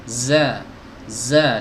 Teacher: keluar dari celah sini ya suaranya celah gigi seri atas dan gigi seri bawah